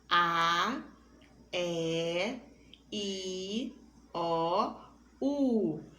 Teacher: ao pronunciá-las o ar sai apenas pela boca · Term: vogais